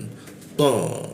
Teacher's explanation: Huruf ta itu di belakang gigi, tapi di bagian atas lidahnya di lengkungan.